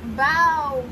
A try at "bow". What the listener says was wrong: You said bop.